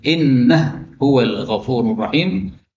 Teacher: innahu huwa, hak ketemu hak boleh idgham menjadi innah huwal ghafurur rahim